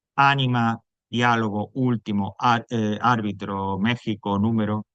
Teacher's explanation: la sílaba tónica es la antepenúltima es decir la tercera Empezando por el final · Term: esdrújulas